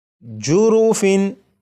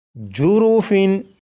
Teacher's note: تنوین کے نون ساکن کو چھپا کر نہیں پڑھنا، بلکہ یہاں پر اسے ظاہر کرنا ہے